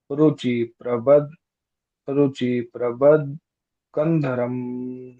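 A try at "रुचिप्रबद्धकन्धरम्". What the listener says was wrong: रुचि प्रबद्ध कंधरम, रुचिप, रुचिप, है ना, आधा प जोड़ेंगे, ज्वाइन कॉन्सोनेंट हम आधा प जोड़ेंगे, रुचिप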